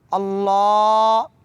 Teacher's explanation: اس کو تھوڑا لمبا کریں گے، اللہ، اور ہا کو بھاری پڑھیں گے۔